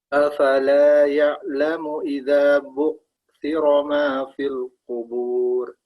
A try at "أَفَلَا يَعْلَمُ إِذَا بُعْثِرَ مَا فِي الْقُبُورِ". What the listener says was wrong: Ain ini kurang. Afala ya'lamu idza bu'thira ma fil qubur.